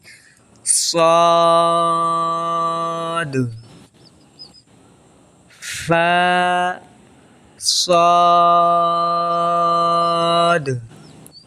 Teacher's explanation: اس میں جو فا ہے تو یہ کہاں سے ادا ہوتا ہے؟ یہ ہونٹ سے ادا ہوتا ہے